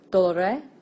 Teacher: It's important to note that the ablative singular ending has a short e.